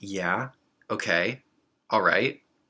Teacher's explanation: We have certain one-word questions such as yeah okay all right these are similar to the chinese second tone